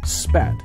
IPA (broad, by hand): spæt